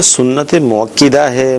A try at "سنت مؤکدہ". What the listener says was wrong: اس میں کہ سنت مؤکدہ یہ نہیں ہے، کاف کے اوپر زبر ہے، سنت مؤکدہ اس طرح پڑھا جائے گا.